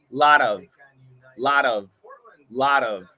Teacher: So a good word to practice would be lot of, LOTOV. And think of it not as a T, but as a D, but you have to say it fast and say lot of, lot of, lot of. · It's FLAP-T, flap tea. The flap tea basically sounds like a D, a very fast D. So a good word to practice would be lot of, LOTOV.